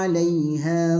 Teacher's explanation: La ja'iluna ma 'alaiha, 'alai, perhatikan ketika membaca lin maka tidak boleh dilama-lamakan linnya, tapi langsung 'alaiha karena lin ini cepat, lebih cepat daripada yang lainnya, maka bacanya 'alaiha.